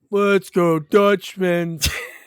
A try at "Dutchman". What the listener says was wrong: No, not Dutchmen's. It was the Dutchman. Yeah, well, you said Dutchmen's.